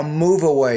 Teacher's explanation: you're taking that V and connecting it to the first vowel the next word that's good linking